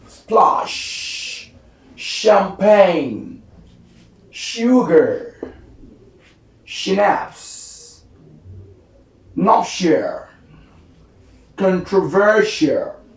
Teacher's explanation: Next we have shh, which is a voiceless post alveolar fricative